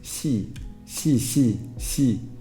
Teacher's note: the Spanish sound is somewhere between the English e that's the kit vowel and the English e which is the dress vowel